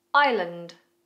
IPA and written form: aɪlənd (Island)